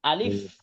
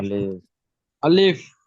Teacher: আরবিতে লিখলে শেষে ফা টা আছে তাহলে আলিফ এক তাড়াতাড়ি হবে শেষে এফ বা ফ এই উচ্চারণটা একটু ভালো করে করতে হবে বাতাসটা বের হয় যেন আলিফ কিন্তু আমি যদি এটাকে আলিফ বলে আটকে ফেলি তাহলে ভুল